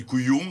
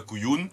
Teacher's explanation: Donc on entend faiblement, il est faiblement nasalisé.